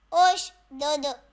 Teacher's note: حمزہ شین پیش اوش، دال دال پیش دودھ، اوش دودھ۔ یہاں دال پہ جزم ساکن ہے تو قلقلہ کریں گے دال میں